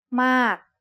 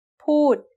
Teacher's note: It's the word ม า ก and it is said with a falling tone because of this rule. A falling tone begins with a relatively high pitch that drops sharply.